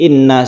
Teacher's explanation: Inna ini adalah ghunnah musyaddadah guna artinya berdengung